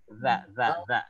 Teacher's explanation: Zal itu letaknya lidahnya di antara dua gigi. Jadi kalau gigi agak ngapit dia keluar sedikit menjulur.